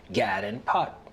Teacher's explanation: The lot trap vowels are reversed for God and pat to sound like gad and pot.